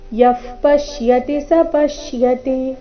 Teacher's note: ಕೊನೆಯ ಚರಣದಲ್ಲಿ ಎಲ್ಲ ಅಕ್ಷರಗಳು ರಸ್ವ ಮಧ್ಯದಲ್ಲಿ ಯಾವುದೇ ಅಕ್ಷರದ ಮೇಲೆ ಜಾಸ್ತಿ ಹೊತ್ತು ನಿಲ್ಲಬಾರದು